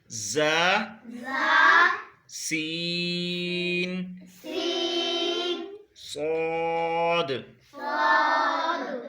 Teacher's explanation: یہ اس کو سیٹی سے ادا ہونے والے حروف بھی کہتے ہیں، کیونکہ ان کو ادا کرتے ہوئے سیٹی کی سی آواز آتی ہے، یہ سختی سے ادا ہوتے ہیں، اسی لیے ان کو حروف صفیریہ بھی کہتے ہیں۔ · زبان کی نوک سے جب اوپر اور نیچے کے اگلے دونوں دانت آپس میں ملیں تو اس سے ز، سین اور صاد ادا ہوتے ہیں